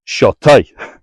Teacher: TAIGH, the English word, has an English T. This Gaelic word has a dental T. T. And it's short, with a little kind of breathy kick at the end.